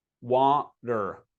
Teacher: This T does not sound the same as the T in words like strong. It's called a stop T